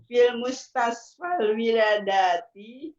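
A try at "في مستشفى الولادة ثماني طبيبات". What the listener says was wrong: Wiladati, la-nya panjang, dan-nya pendek.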